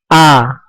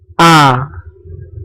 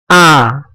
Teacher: kita merasakan yang bergetar hanya tenggorokan bagian paling bawah saja serta tidak keluar angin dan dibaca tipis a bibir atas dan bibir bawah terbuka dan lidah di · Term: huruf hamzah